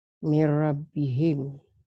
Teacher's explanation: Ini idgham nun mati ketemu roh, idgham bila gunnah. Ada bi gunnah itu dengan dengung, ada bila gunnah tanpa dengung, ya.